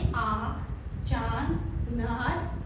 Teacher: इसके उच्चारण के समय हवा नाक तथा मुख दोनों से दबाव के साथ बाहर निकलती है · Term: अनुनासिक